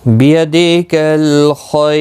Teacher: یا ساکن را جب وقف کی صورت میں ساکن ہوگا تو باریک پڑھا جائے گا۔ جب بھی را ساکن سے پہلے والے حرف کے نیچے زیر ہوتی ہے، یا ساکن ہوتی ہے تو باریک پڑھا جاتا ہے، زیر کی حالت میں بھی باریک پڑھا جاتا ہے، تو یہاں پر باریک پڑھا جائے گا۔